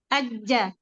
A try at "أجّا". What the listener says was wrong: أستاذ، أجا. الجيم من وسط اللسان ليس من طرف اللسان، من الوسط يا أستاذ. أجا. أجا.